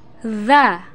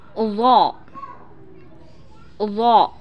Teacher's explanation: Huruf za diucap dengan tipis, sedangkan huruf dho dengan menebalkan suara, dengan mengangkat posisi pangkal lidah dan lidah bagian depan menutup bagian langit-langit.